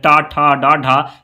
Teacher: ट वर्ग के जितने भी अक्षर है ये मूर्धन्य है